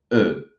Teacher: Então, você tem que pensar em tentar fazer o som E, só que com a boca fechada. Então, é uma boca de O fazendo o som E.